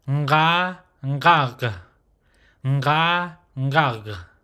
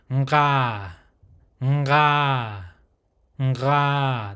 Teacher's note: But with this one is a nasal sound with the throat or guttural sound with an open mouth, no jaw movement, right? So that nasal sound, and you just add it to that ka sound that we just learned before, and you'll get that sound.